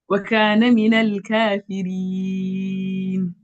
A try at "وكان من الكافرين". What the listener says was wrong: But the fa is not coming out. See, it's sounding like kadibin. it's kafi, kafi.